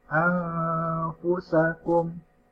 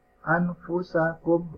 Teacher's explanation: ini seharusnya dibaca ikhfa, tapi dibacanya idhar